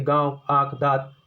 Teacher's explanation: ऐसे स्वर का उच्चारण नाक और मुंह से होता है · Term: अनुनासिक